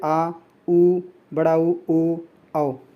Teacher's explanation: जिन स्वरों के उच्चारण में जीभ का पिछला भाग सामान स्थिति से ऊपर उठता है पश्च स्वर कहे जाते हैं